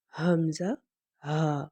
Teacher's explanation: سینے کی جانب جو ہنسلی کی ہڈی ہے یہاں سے ہم حمزہ ہا ادا کریں گے، اور یہ بھاری آواز آئے گی اس کی